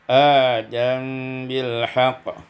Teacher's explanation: iskanul mim ma'al ikhfa, disukunkan mim dengan ikhfa